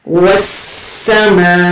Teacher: یہاں پر 3 سے 4 حرکت کھینچ کر پڑھیں گے کیونکہ مد متصل ہے۔ وسما، حمزہ زیر ای، وسماء۔